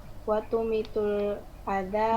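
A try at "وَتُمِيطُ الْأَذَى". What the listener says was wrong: minnya panjang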